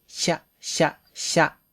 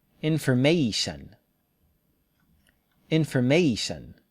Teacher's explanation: the Japanese version flat tongue cha-cha-cha English version curled tongue round lips